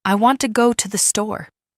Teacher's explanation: want and store are stressed and the other words are said quickly and softly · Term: Sentence stress